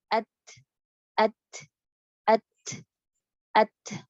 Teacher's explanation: biar nempel dulu at, terus berangin pas kita menjauh. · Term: huruf ta